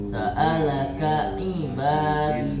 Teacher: jangan digabung antara ka dan ain. Biasanya kalau cepat itu kayak seakan-akan ain tasydid.